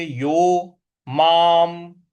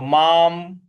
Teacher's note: म के ऊपर जो अनुस्वार है उसका भी उच्चारण हमें म ही ले आना है, तो माम इस प्रकार से हो जाएगा।